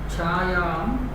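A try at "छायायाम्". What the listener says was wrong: Two yas here. Chaya, one ya is there. Another ya should be added here. Chayayam.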